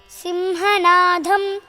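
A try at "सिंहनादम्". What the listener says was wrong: No, dham and all that. Alpa prana is alpa prana always.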